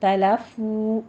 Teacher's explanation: وخ تلفو، آگے تا بھی باریک رکھیے گا، وقت تو نہیں کہنا، وقت تلفو، فو میں واو مد ادا کریں گے، 2 کاؤنٹ کرنا ہے